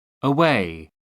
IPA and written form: əˈweɪ (away)